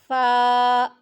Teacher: فا اوپر کے دانتوں کے کنارے اور نچلے ہونٹ کے تار حصہ سے ادا ہوتا ہے۔